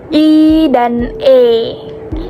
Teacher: lidah depan itu berarti bagian depan lidah itu naik. Misalnya waktu mengucapkan vokal I dan E itu posisi lidah kita naik.